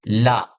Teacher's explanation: जीभ बीच में छत से लगती है। हवा किनारों से बाहर निकलती है। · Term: पार्श्विक व्यंजन